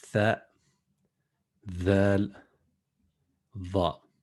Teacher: So when we pronounce the tha and the dhal and the dha, then as we mentioned that the tip of the tongue is between the teeth when we pronounce them